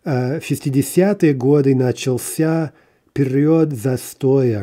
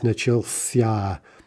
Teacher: The stress on the ся, somewhat unpredictable.